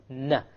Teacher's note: you connect the tongue to the molar behind the canines you have the noon · you use the tip, unlike in the lam where you use the upper portion